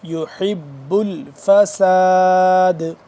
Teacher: آخر میں قلقلہ ہے کیونکہ دال ہو جائے گا یہاں پہ ساکن اور یہ دال ہے حروف قلقلہ میں سے قاف طا با جیم دال.